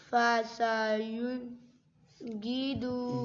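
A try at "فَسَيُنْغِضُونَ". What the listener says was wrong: گی پھر گا پڑھ دیا. غوی غوی فسینغضو.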